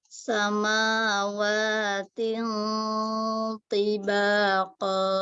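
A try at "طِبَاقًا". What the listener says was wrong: Tebalkan ti.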